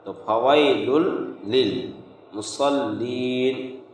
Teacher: صاد یہ موٹا حرف ہے تو صاد کو موٹا کر کے پڑھیں گے